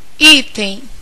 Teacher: a sílaba tônica da palavra item está justamente no i olha como ele se prolonga esse I aqui é